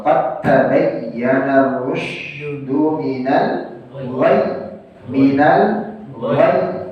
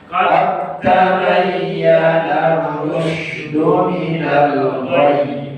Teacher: dalnya melebur menjadi ta. Karena dal dengan ta berdekatan makhrajnya. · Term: mutaqaribain